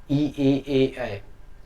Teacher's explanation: जीभ के अग्रभाग से आपका होता है ई, बड़ा ई और ए